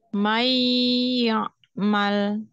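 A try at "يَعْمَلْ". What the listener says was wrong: jangan ya mal condong ke ain. Dia apa namanya tertutup ya, tertutup aja pita suaranya. mal ya mal hamzah ya, bukan ain.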